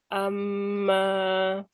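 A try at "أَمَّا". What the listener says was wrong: Kurang lama.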